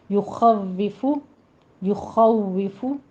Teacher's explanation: نے فا میں نہیں بدلنا، نہ اس میں ہمس آنا چاہیے، یخوف ہونٹ گول کرنے ہیں تاکہ واو کی تشدید ادا ہو پراپرلی